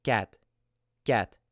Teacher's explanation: what you want to do with this light K sound is not have the breath hit your hand when you say cat.